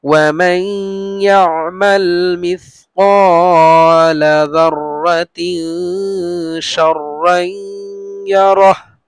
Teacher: নুন সাকিনের পরে ইয়া আসছে ইদগামে বা গুন্না, গুন্না হবে